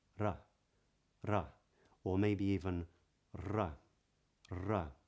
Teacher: Your tongue might actually be touching the roof of your mouth, albeit very briefly.